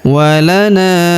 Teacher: huruf na kita panjangkan empat atau lima harakat